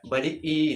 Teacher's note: बड़ी ई का भी उच्चारण करते समय हमारे जीभ का जो है अगला भाग उठेगा